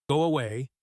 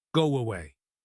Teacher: We add a tiny W sound between the words to make the transition smoother. It happens automatically when we speak quickly. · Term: intrusion